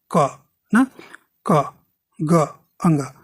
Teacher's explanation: अल्प प्राण में आप देखें बोलेंगे तो कम वायु निकलेगी